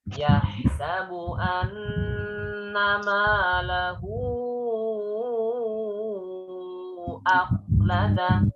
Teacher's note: kalau setelah hak domir ini adalah huruf hamzah, maka panjangnya udah bukan 2 harokat lagi. Panjangnya maka berubah lebih dari 2 harokat dan itu dihukum sebagai mat far'i.